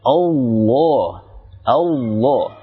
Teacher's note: bukan mengeraskan suara, tetapi menebalkan, yaitu menaikkan pangkal lidah ke langit-langit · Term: tafkhim